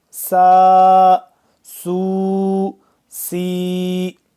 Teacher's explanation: سین سیٹی کی آواز نکال کے۔ سین الف زبر سا، سین واو پیش سو، سین یا زیر سی، سا سو سی۔